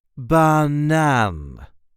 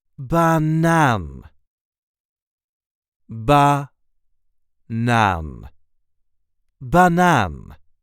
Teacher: There is a light emphasis on the last syllable.